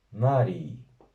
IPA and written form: 'ma.riː (MAREI)